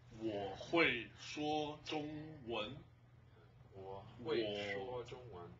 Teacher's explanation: we have a falling rising tone, we have a falling tone, we have a high flat tone, another high flat tone, and a rising tone. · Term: the four major tones